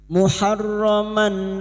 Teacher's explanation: maka bunyi fathah tanwin dibaca jelas tanpa mendengung muharoman Alif kecil di atas dua harakat kita panjangkan Mad thii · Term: Idhar halq